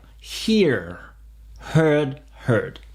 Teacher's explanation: Et on n'entend pas le R.